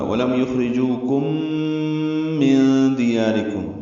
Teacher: ولم یخرجوکم من دیارکم، میں نون ساکن کے بعد دار آنے کی وجہ سے اخفا ہے، نون کی آواز چھپائیں گے · ولم یخرجوکم میم ساکن پہ اظہار شفوی، یخرجوکم خا ساکن پہ ہمس را باریک، جو واو مدہ، دو حرکات لمبا کریں گے. کاف باریک میم ساکن کے بعد میم آنے کی وجہ سے ادغام ہے، ادغام شفوی ہے. یہ یہاں پہ غنہ ہوگا.